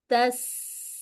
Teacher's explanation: جو سین میں سیٹی بھی ہے، ہمس بھی ہے